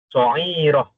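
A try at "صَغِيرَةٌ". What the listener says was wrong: bukan bukan ain gin sirah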